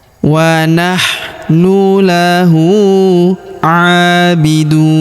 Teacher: huruf hu kita panjangkan dua harakat karena berharakat U terbalik. Kalau harakat U biasa seperti ini dibaca satu harakat.